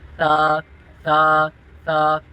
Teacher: اس کا مخرج ہے زبان کا سرا اور اوپر کے دانتوں کے اندرونی کنارے سے ادا ہوتا ہے۔ جب اس کو آپ زبان کا سرا اور اوپر کے دانتوں کے اندرونی کنارے سے ادا کرو گے، سیٹی کی آواز نہیں آئی، ایسے تا، تا، تا۔